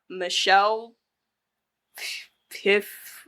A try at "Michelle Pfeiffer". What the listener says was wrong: It's usually the F that you're pronouncing, not the P. Yeah, but you say the F.